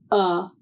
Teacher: To make the sound of the letter u, this is an open mouth voiced sound. The sound is made with the tip of the tongue in a low position in the front of the mouth and the back of the tongue is raised. Uh is a voiced sound.